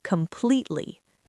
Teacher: You do not want to mumble this. You need to hit the second syllable with a lot of force.